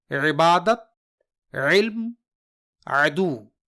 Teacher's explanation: یہ حلق کے درمیان سے ادا ہوتا ہے لیکن اسے ادا کرنے کے لیے حلق پر دباؤ ڈالنا ہوتا ہے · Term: عین